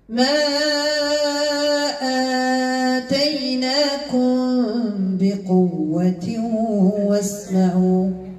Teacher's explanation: إخفاء شفوي الميم مع الباء